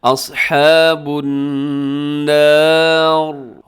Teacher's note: رکیں گے تو را ساکن ہو جائے گی، اور را ساکن ہو تو پھر ہم اس سے پہلے والا حرف دیکھتے ہیں، اگر اس سے پہلے والے حرف کے اوپر حرکت ہو، جیسے یہاں نون کے اوپر حرکت ہے تو را موٹی پڑی جائے گی